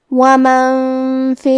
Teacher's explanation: کلمت ومن کے آخری میں نون ساکن ہے، پھر حرف الفا ہے، فا حروف الاخفاء میں سے ہے، اور اخفاء کا معنی ہے چھپا دینا، تو ہم نون ساکن کو چھپاتے ہوئے اور غنہ کے ساتھ یہ حکم کو ادا کریں گے